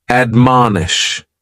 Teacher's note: admonish has 3 syllables, and the stress is on that second syllable, mon. Admonish, and this is a verb that we use with a direct object, to admonish someone, usually for doing something wrong, because what it means is to counsel or advise against something.